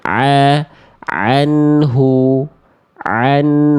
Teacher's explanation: kalau dari tengah tenggorokan muncullah ain